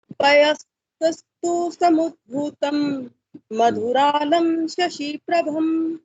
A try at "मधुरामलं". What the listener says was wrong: मधुरामलम, आधा माँ बीच में है।